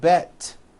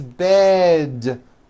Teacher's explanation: It's not bet with an unvoiced T, it's bed with a voiced D.